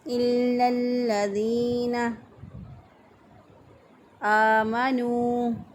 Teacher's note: حمزہ کھڑی زبر آ ہے، ایک الف کے برابر اس کو کھینچ کے لمبا کر کے پڑھیں گے